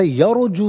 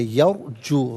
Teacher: را کو بالکل ساکن پڑھیں گے اور پر پڑھیں گے